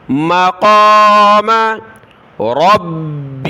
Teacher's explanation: با کو سخت کیا تشدید کی وجہ سے